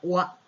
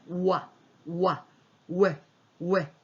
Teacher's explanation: 그렇지 이 자체 사운드가 없는 거기 때문에 여러분들이 그거는 이 뒷사운드에 맞춰서 자 A니까 커져야 되죠. 자 입을 크게 벌리면서 작아진 상태에서 크게 벌리면서 A 사운드가 나오는 거예요. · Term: W 사운드